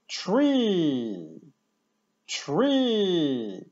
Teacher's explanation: Wielu koniuszek języka przy wymowie t dotyka górnej części zębów i dziąseł, tam gdzie się spotykają u góry zęby i dziąsła. T, t, t w połączeniu z kolejną spółgłoską może wręcz to brzmieć jak takie miękkie czy.